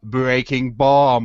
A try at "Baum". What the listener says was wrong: B-A-U-M. Baum. You pronounce the A before you do the U.